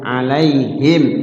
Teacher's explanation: alaihim di situ ada Mim mati ketemu Alif izhar syafawi ya mimnya terbaca jelas enggak boleh samar di bibir